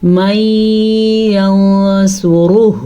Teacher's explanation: نون ساکن کے بعد یا آیا ہوا ہے تو ان کو آپس میں ہم ملا بھی دیں گے اور غنہ بھی ادا کریں گے